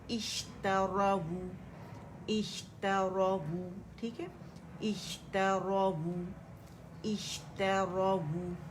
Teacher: वाव दम्मा वू बारीकी से अदा करेंगे, इसे स्ट्रेच नहीं करेंगे